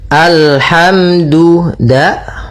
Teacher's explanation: makhrajnya pada ujung lidah menempel di antara gusi dengan gigi atas